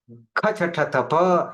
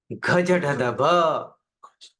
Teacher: भीतर से अधिक वायु फेंकना पड़े, डबल वायु, उस अधिक वायु फेंकने को महाप्राण कहते हैं